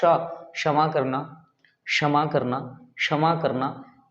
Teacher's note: अक्षा जो है क और मूर्धन्य श का मिश्रण है, क और मूर्धन्य श का मिश्रण है, दोनों को संयुक्त करके तब बनाया गया अक्ष, इसलिए पढ़ते हैं अक्ष।